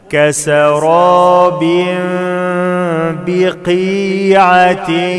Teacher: تنوين بعد باء إقلاب مع الغنة